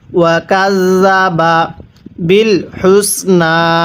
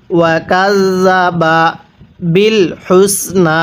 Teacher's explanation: হাটা উচ্চারণের সময় মুখ দিয়ে হালকা বাতাস বের করে পড়তে হবে।